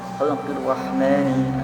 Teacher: Dan contoh syamsiyahnya ada di ayat ketiga, fi khalqir rahmani. Alif lam bertemu huruf ra langsung dimasukkan bacanya ke huruf ra.